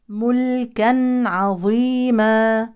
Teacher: وصلا تنوين يليه عين يعني اظهار حلقي ملكا عظيما الظاء من حروف التفخيم ووقفا مد عوض لكن نحافظ